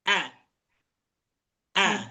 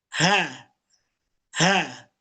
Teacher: Yang pertama adalah huruf hamzah tidak memiliki aliran udara. A a kalau ha suara dengan udara keluar secara bersamaan. Ha ha.